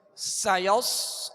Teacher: سایوس آگے صاد ہے، صاد کو پر پڑھیں گے، ہونٹ گول نہ ہو اور سیٹی کی آواز پیدا ہو